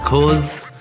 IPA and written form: kɔːz (because)